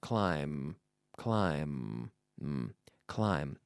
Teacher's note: Climb, it's silent. The word ends with the M sound, which is formed when we touch our lips together.